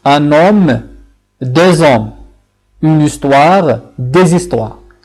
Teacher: Il accepte bien entendu la liaison, c'est-à-dire il accepte que le S de la forme plurielle de l'article qui précède ce H soit combiné avec la voyelle qui suit le H lui-même. Et on aura le son Z.